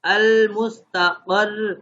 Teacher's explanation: آخری حرف کو ساکن کریں گے لیکن سختی کے ساتھ. جیسے المستقر، المستقر تھا تو اس کو ہم وقف کریں گے تو المستقر، سختی کے ساتھ المستقر.